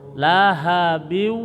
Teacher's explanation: patah kasroh tain bertemu dengan wawu namanya idgham ma'al gunah. Jadi monyongkan ditahan dua ketukan.